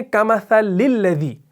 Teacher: اب کمثلی کے لام کو آگے الذی کے لام سے ملاتے ہیں